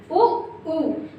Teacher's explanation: जब आप उ बोलते हैं तो आपके ओंठ कैसे हो रहे हैं, गोल हो रहे हैं।